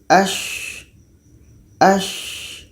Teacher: Sya ini letaknya pada tengah lidah, menempel dengan langit-langit mulut. Tengah lidah menempel dengan langit-langit mulut. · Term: rokhawah